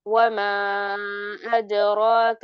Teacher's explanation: वमा अद्राक मल हुतमा नहीं, माँ लंबा नहीं खींचना। और अदराक, दाल पर कलकला भी आना चाहिए